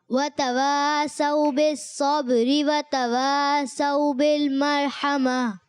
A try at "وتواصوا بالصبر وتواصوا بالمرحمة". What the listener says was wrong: صاد کو اور زیادہ پر رکھنا ہے کیونکہ یہ موٹا حرف ہے اور ایکسٹرا موٹا ہے، یعنی اس کو اور زیادہ موٹا کریں گے.